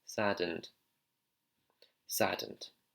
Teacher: the d actually hits just behind the front two teeth there